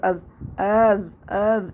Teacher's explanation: تسہیل کی اس کی وہ ہوگی مثال کہ حمزہ کو ہم درمیان والے حمزہ کو نرمی سے پڑھیں گے، تسہیل کے ساتھ پڑھیں گے ، حمزہ زبر حمزہ زال زبر از از از، اس طرح